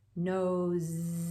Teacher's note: the word nose does not have a z at the end but the sound that you make is the z sound